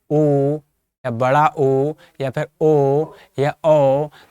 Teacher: ऐसे स्वर जिन्हें बोलते समय ओष्ठ की आकृति कैसे रूप में हो जाए? वृत्त के रूप में। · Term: वृत्तमुखी